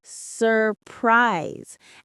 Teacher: Notice how the S in surprise has a Z sound.